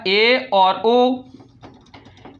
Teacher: वे स्वर जिनको बोलने में हमारा मुख द्वार आधा बंद रहता है